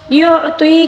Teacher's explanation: عین کو حلق کے درمیانی حصے سے ادا کریں گے، تو کو پر پڑھیں گے، اور یا مدہ بھی ہے، یا ساکن سے پہلے والے حرف کے نیچے زیر ہے، اس وجہ سے یہ یہاں پر یا مدہ ہے، اس کو تقریباً ایک الف کے برابر کھینچ کر پڑھنا ہوگا، ٹھیک ہے۔